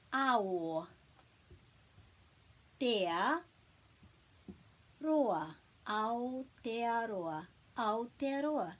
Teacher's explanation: And then we put a break after each vowel.